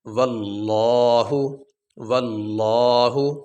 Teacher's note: لفظ اللہ سے پہلے زبر آ گئی اس لیے ہم یہاں پہ لفظ اللہ کو موٹا کریں گے